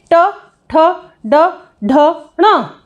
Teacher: तो इसमें जब आप बोलकर देखेंगे तो आप देखेंगे आपकी जीवा, हमारा जो छतरी नुमा जो हिस्सा है मुख के अंदर, इस तरह से दोस्तों इसे मूर्धा कहते हैं। तो जीभ का टकराव मूर्धा पे होता है, तो इसीलिए इसे मूर्धन्य इसका उच्चारण स्थान रहेगा